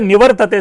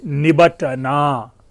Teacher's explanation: केवल ध्वनि परिवर्तन होकर के व का ब बन रहा है, र गौण हो रहा है, र ध्वनि विलुप्त हो रही है, त ध्वनि जो है अपना स्थान ग्रहण कर रहा है ट में